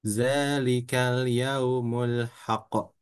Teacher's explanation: ditahan ya karena dia bertasdid ditahan dulu setelah itu baru ada pantulan